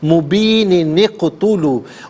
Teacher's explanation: اگر ملا کر پڑھیں گے تو یوں پڑھیں گے درمیان میں نون قطنی آئے گا, ضلال مبین نقتلوا, ملا کر اس طریقے سے پڑھیں گے کہ درمیان میں نون قطنی آئے گا